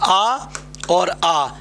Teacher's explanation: तो ये आपका आ और आ, इसका उच्चारण स्थान कंठ से है